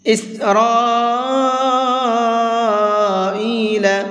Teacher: اس بڑے مد کو 4 سے 5 الف کے برابر کھینچ کر کے پڑھیں گے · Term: بڑا مد